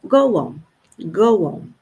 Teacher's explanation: Eh, para indicar essa junção dos dois ó, acaba entrando esse som de U que é suave